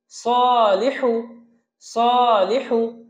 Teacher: সতে এক আলিফ টান আছে, লিতে কোনো টান নেই, হুতে কোনো টান নেই।